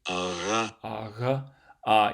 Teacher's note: this voiced velar fricative can often sound like a V, ara, even though it's kind of not anywhere close to being the same thing as a V.